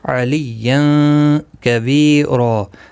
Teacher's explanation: وی یا مدہ ہے، ایک الف کی مقدار کے برابر کھینچ کر پڑھیں گے. را الف مدہ بنے گا.